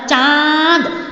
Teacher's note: चांद बोल के आपका मुंह भी खुल गया, मुंह का प्रयोग हुआ, साथ में ध्वनि जो थी आपके नाक से निकली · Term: अनुनासिक